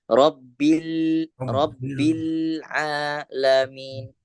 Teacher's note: harus ditahan satu harakat satu ketukan tidak boleh lebih tidak boleh kurang